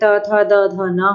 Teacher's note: दंत से उच्चरित वर्ण जो होते हैं वह हमारे ता वर्ग होता है